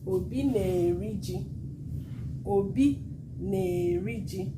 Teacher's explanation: This E swallowed the A. Then it started sounding like na-eri-ji. Eri is a heavy vowel, a heavy verb.